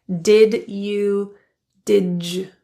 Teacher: did and youu often reduce to did the D Blends into a soft J pronunciation · The assimilation of adding the j or J kind of sound happens from a D to a Y transition.